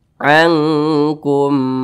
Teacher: dibaca ankum nah lebih condong ke suara Eng nah seperti itu panjangnya dengungnya itu didengungkan kira-kira dua ketukan atau dua harakat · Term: ikhfa Hakiki